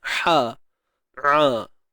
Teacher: Huruf ha dengan ain ni kita kena sempitkan di tengah kerongkong. Jadi mula-mula sempitkan ha, kemudian baru sempitkan ain.